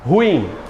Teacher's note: A mais forte é o in, ela é oxítona e dissílaba.